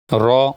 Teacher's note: र जबान की नोक और मुकाबिल के तालू से अदा होता है